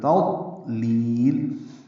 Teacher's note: تضلیل تا باریک ہے، ضاد پر ہے اور یہ ساکن ہے، اس پہ اظہار ہوگا، یعنی قلقلہ نہیں ہوگا، ضاد پہ قلقلہ نہیں، تادو یہ غلط ہے، تد دال بنانا یہ بھی غلط۔ تضلیل لام کو لمبا کریں گے وقفاً، آخر لام پہ اظہار ہوگا، مد عارض سکون بنے گی۔